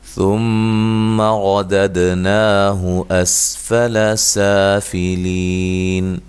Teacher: میم مشدد پہ غنہ ضروری ہے، را کو موٹا ادا کریں گے۔ دد دال پہ قلقلہ ہے، ہلا کے پڑھیں گے۔